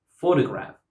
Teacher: because the speaker puts the stress on the first syllable, we understand that the word is photograph